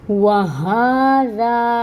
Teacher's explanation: واو پہ اپنے لپس کو راؤنڈ کریں اور فتح کی حرکت کو 1 کاؤنٹ پڑھیں۔ ہونٹ گول۔